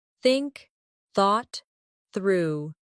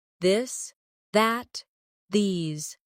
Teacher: Put your tongue between your teeth and push air out for think. For this, your tongue touches the same position, but with your voice turned on.